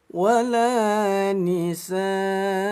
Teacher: Nun yang bertasydid namanya gunnah, dibaca dengung 2 ketukan. 1, 2, lanjut.